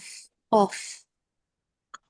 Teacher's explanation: Kalau yang ko itu kan pangkal lidah bagian belakang itu bertemu dengan langit-langit yang langit-langit lunak tuh.